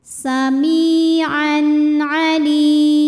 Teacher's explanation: Kemudian ada hukum idhar halqi karena ada tanwin fathah yang menghadapi huruf halqi atau huruf tenggorokan yaitu ain. Maka tanwinnya dibaca jelas, jadi masih bunyi N.